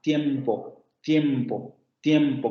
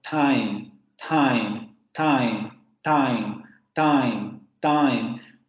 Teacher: en inglés este fonema efectivamente sería una alveolar